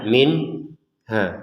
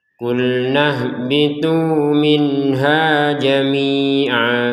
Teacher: nun sukun bertemu ha kita baca dengan jelas. Jelas itu tidak ada dengung dan tidak dijeda. Ya, kalau didengungkan minha itu salah.